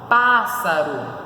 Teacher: E o acento ali, a sílaba tônica está no pá.